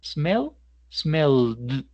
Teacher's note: Entonces, si tomamos, por ejemplo, el verbo smell y tocamos la garganta, eso ayuda. Esa L la alargamos, detenemos vibración, ¿cierto? Y por tanto, la versión pasada va a sonar como d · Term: voiced sound